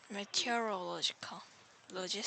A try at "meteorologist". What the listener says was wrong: Yeah, two ways to pronounce this. Meteorologist. Second, meteorologist. Not meteorological, just and with the IST, because we're talking about the person.